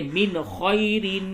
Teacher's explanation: نون ساکن کے بعد حروف حلقی خا ہے، یہاں پہ اظہار کیجئے